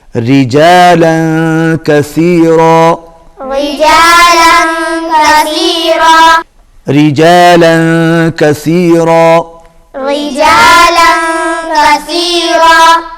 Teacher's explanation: یہاں پر را جو ہے باریک پڑھا جائے گا، اس لیے کہ را کے نیچے زیر ہے، جب بھی را کے نیچے زیر آئے گی باریک پڑھا جائے گا۔